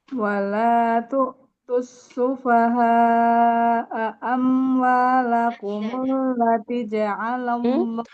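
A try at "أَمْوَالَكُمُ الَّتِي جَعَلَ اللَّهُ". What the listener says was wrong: Taknya panjang Ibu. Amwalakumul lati tak kasroh ketemu ya. Amwalakumul lati ja'alallahu lakum.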